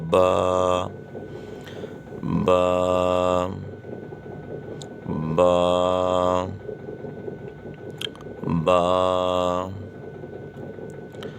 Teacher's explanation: دونوں ہونٹوں کی اندرونی تری کے ملنے سے یہ حرف پڑھا جاتا ہے. دونوں ہونٹ ہیں نا، تو دونوں ہونٹ کا جو حصہ تر رہتا ہے وہ حصے دونوں آپس میں ملیں تو یہ حرف پڑھا جائے گا.